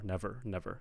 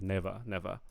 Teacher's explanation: we want to hear the r the final R